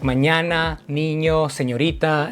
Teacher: your nose the any sound is called a palladal nasal because instead of putting your tongue right behind your teeth you're pressing against your palate and then releasing air through your nose it's like you're violently crushing something with your tongue and if